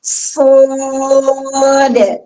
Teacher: Alif yang berubah tafkhim karena ikut di huruf shad